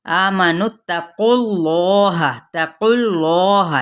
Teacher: या, आमनुत्तकुल्लाह, आ पे मद्दे असली बिल अलिफ का कायम मुकाम, नून की पेश को ता के साथ मिलाएंगे और कौफ की पेश आगे लाम के साथ मिलाएंगे